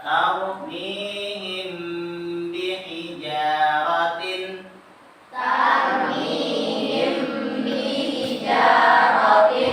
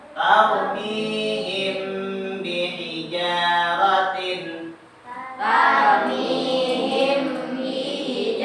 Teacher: Huruf mimnya ditahan ketika bertemu dengan ba. Mim sukun kita bertemu dengan ba, tahan. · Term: ikhfa syafawi